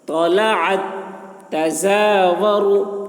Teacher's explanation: جس تا پہ جزم ہے اس تا کو نہیں پڑھا جا رہا بلکہ عین کو مشدد والے تا سے ملا کر پڑھ رہے ہیں